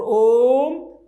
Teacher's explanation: इसमें उच्चारण में हमें 3 गुना समय लगता है, तो ये त्रिमात्रिक ध्वनि है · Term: प्लुत ध्वनि